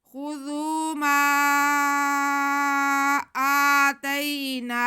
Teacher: آگے نون پہ کھڑا زبر ہے تو نون کی آواز کو ہم کھینچیں گے ایک الف کے برابر